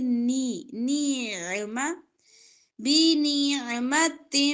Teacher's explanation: دو زیر کو میم کے ساتھ ملا کر ادغام کریں گے گننے کے ساتھ